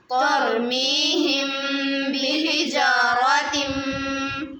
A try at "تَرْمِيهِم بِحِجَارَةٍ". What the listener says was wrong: बेटे जब पढ़ा ना तरमीहिम आपने ता की आवाज़ निकाली, ता की आवाज़ निकाली। ता और ता में फ़र्क है। तरमीहिम बिहिजारतिम